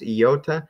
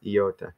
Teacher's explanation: It almost comes across when I say it fast, iota. It sounds like there's a Y in there.